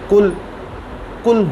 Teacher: मैं मिसाल के तौर पर अर्ज़ करता हूँ कि जैसे ये काफ़ और काफ़ हैं, ये दोनों की आवाज़ काफ़ ही है, लेकिन अरबी के अंदर जो काफ़ नुक्तों वाला है इसको मोटा करके पढ़ा जाता है और जो नुक्तों के बगैर, डॉट्स के बगैर काफ़ है, इसको बारीक करके पढ़ा जाता है